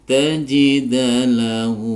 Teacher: Para sahabat sekalian yang dirahmati Allah, kita akan lanjutkan untuk mengurai penggalan ayat ini. Falanta nun sukun bertemu ta dibaca ikhfa hakiki, samar disertai dengung